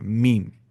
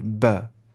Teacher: मीम निकलता है dry portion of lips को मिलाने से, मीम, और बा निकलता है वेट पोर्शन ऑफ लिप्स को मिलाने से, बा, मीम।